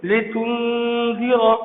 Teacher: نون ساکن کے بعد دال آ جائے تو یہاں پر اخفا کریں گے، یعنی ناک میں چھپا کر پڑھیں گے۔